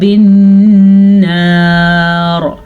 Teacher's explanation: نون پہ غنہ ہو رہا ہے کیونکہ نون پہ شد ہے